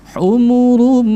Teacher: Karena hukumnya adalah idgham bi gunnah. Jadi kita meleburkan bunyi dhammatain masuk ke dalam huruf mim dengan digunnahkan. Gunnah di sini timbangannya adalah 1 alif atau setara dengan 2 harakat.